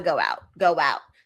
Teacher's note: So it's as if I'm inserting a W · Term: glides